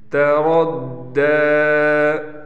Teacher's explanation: دا پر کھڑا زبر ہے، لہٰذا اس کو ایک الف کے برابر کھینچیں گے